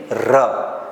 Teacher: દાંતની નજીક રહીને જીભનું જરા કંપન થાય કંપન એટલે કે ધ્રુજારી થાય છે તેને દંત્ય પ્રગંપી વ્યંજન કહેવામાં આવે છે વ્યાખ્યા દરેકને દોસ્તો ધ્યાનમાં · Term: દંત્ય પ્રકંપી વ્યંજન